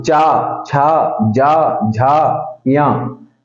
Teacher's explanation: आपकी जो जीभ है ऊपर तालू पे टच होगी, यानी कि दांत से पीछे जो ऊपर का हिस्सा है तालु, चा, छा, जा, झा, या, यानी कि आपकी जीभ ऊपर तालु पे, आपके जो तालु होते हैं उस पे टच हो रही है, ठीक है।